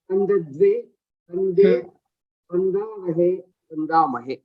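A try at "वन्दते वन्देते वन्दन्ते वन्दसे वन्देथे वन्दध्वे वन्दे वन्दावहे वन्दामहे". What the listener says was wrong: Samyak.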